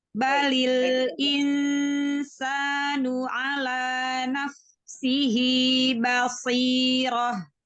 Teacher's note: Ba-nya tipiskan dulu, shotnya baru tebal ya.